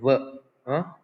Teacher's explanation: Ver is an voiced, labiodental, fricative consonant.